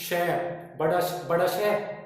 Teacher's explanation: देखो वायु ज्यादा निकल रही तो महाप्राण में आ गया।